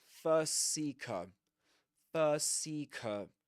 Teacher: So it's like you don't pronounce two S's. You only pronounce one, and you say first Seeker. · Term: one long S sound